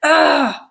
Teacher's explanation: so it's kind of happening in the middle of your mouth lips are not rounded it's an unrounded sound and it is a LAX sound on our vowel quadrilateral this is where the stressed uh is · it's a mid sound in terms of tongue advancement it's a central sound so it's kind of happening in the middle of your mouth lips are not rounded it's an unrounded sound and it is a LAX sound on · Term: stressed uh sound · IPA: /ʌ/